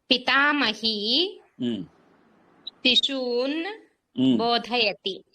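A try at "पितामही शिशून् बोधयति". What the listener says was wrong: ఉత్తమం madam, correct.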